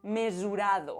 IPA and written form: me.zu.'ɾa.ðo (mesurado)